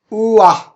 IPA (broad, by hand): ʊə